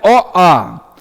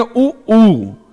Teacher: तो जब हम एक साथ प्रयोग करना शुरू करेंगे तो जैसे हम बोलते हैं ओ आ, तो ओ आ की तुलना में अगर हम बोलेंगे उ ऊ, आप जरा उच्चरित करके देखिए, दोनों में अंतर समझ में आ जाएगा। तो ओ आ की तुलना में ऊ में हमारा वृत्त बन रहा है, मतलब ओठ की स्थिति गोलाकार हो रही है।